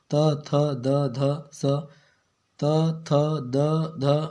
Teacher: ये दांत को टच करेगा ना। जीभ का जो नोक होगा वो क्या करेगा? ऊपर के दांतों को टच करेगा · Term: दंत व्यंजन